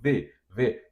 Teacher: Os lábios também encostam no dente.